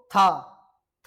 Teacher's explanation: जब आप इसका उच्चारण करेंगे तो था थ में आपकी जीवा आपके दांत से स्पर्श करती है।